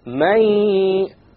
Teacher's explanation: you drop the noon sound. But you have a ghunna. And that's the nasal sound. May. If you close your nose, you will not be able to.